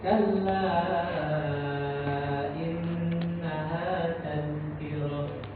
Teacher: Dia dari ujung lidah. Ujung lidah nempel di gigi di atas Pak. Jadi dia nggak boleh keluar udara. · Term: huruf zal